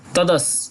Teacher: দন্তস এর সঠিক উচ্চারণ হয় ছ এর মত তাই ছ টা অর্ধেক উচ্চারিত হবে